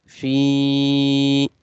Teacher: make fa sound longer because of ya madda.